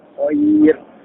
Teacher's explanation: يرقق حرف الراء بعد مد اللين ترقيقا مطلقا. بمعنى، ففي كلمة خير المد هنا يسمى بمد لين.